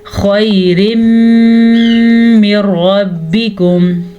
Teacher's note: پھر یہاں پہ ادغام بلا غنہ کا قاعدہ ہو رہا ہے، یعنی ملانا تو ہے لیکن غنے کے بغیر، کیونکہ نون ساکن کے بعد را آ گیا ہے